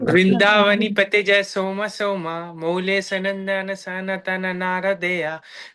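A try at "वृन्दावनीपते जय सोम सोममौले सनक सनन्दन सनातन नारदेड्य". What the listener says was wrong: दोबारा बोलो, पूरा पूरा बोलो, शब्दों को बीच बीच में आधा आधा नहीं बोलो। सनक सनंदन ना पढ़ के बोलो। सनक सनंदन।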